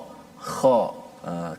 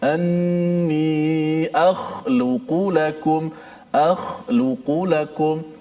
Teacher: Huruf kha yang mati daripada perkataan akhluqu keluarnya daripada mana? Keluarnya daripada hujung halqum. Ini kita punya leher kita di hujung halqum yang berdekatan ataupun jiran kepada permulaan ataupun pangkal lidah kita.